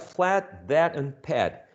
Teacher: they share the same rhyme the same nucleus the same coda perfectly said the onset does not matter